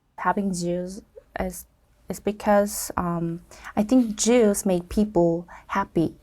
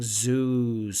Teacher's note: her z sounds are coming out a bit like a j sound